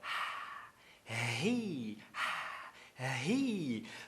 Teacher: A palavra ele, que é ri, você pronuncia com um fonema glotal.